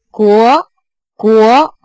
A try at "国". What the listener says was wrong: 啊 ， 国 是 这 样 的 啊 ， 国 它 越 往 后 的 时 候 ， 越 往 后 的 时 候 要 把 它 的 声 音 变 大 ， 也 就 是 音 强 变 强 ， 国 不 是 国 ， 最 后 就 弱 了 ， 是 国 国 。 它 不 是 国 国 ， 是 一 直 推 上 去 ， 国 国 国 ， 不 是 国 ， 不 是 这 样 ， 对 ， 但 是 你 的 起 调 稍 微 有 点 低 ， 因 为 阳 平 调 我 们 叫 高 声 调 嘛 ， 它 是 从 三 到 五 这 个 跨 度 ， 所 以 起 调 的 时 候 要 高 一 点 ， 是 国 国 ， 不 是 国 国 ， 你 看 起 调 不 一 样 。